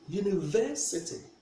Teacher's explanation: We place the stress on the third syllable